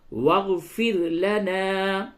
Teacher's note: را کو باریک پڑھیں گے، را ساکن سے قبل زیر ہے، یہ را باریک ہوگی